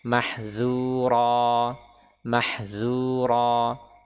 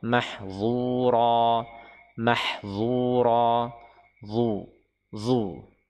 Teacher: huruf dha dia diucapkan dengan itbaq, yaitu apa, terkurungnya suara ya, sehingga tebal.